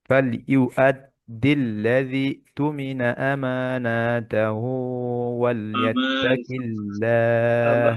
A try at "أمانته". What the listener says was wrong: আমানাতে মাদ নাই